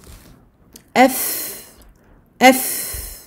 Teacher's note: les dents du haut, les incisives supérieures, se posant sur la lèvre du bas, sur l'intérieur de la lèvre du bas. Si vous répétez F, donc vous mettez hamza fatha avant le fa soukoun, vous vous rendez compte immédiatement de la position qu'il faut adopter.